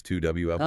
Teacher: Notice vowel to vowel linking, maybe with that little J or W sound inserted